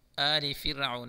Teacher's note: کا قانون ہے، میم ساکن کا ادغام ہوگا یہاں، آل فرعون اس را کو باریک پڑھیں گے